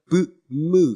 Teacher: 입보다는 코 속에서 비강에서 소리가 나는 거고요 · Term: 비음